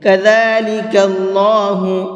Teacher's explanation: اللہ کے لام کو پر کر کے پڑھیں گے کیونکہ اللہ کے لام سے پہلے زبر ہے